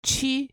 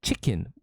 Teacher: It's not like chicken. Korean does not have the I, the short I sound. So these two get confused very often.